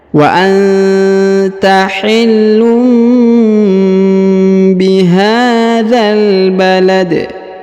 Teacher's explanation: Kemudian balad, huruf dalnya dipantulkan atau diqalqalahkan, ya, karena dia sudah berada di ujung ayat atau di ujung bacaannya